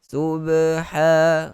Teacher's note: huruf ha juga sama tempat keluar huruf ain juga, tetapi dia punya suara kita lepaskan habis.